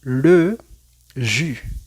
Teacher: Es como si tenemos una I, pero con la boca cerrada.